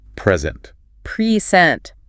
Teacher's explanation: Stress on the first syllable. Present. Present. The PRE is loud and clear.